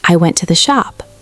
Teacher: Australians will make statements that go up at the end like they're asking a question. So they'll say something like, "I went to the shop." And they're not asking, they're telling you. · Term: high rising terminal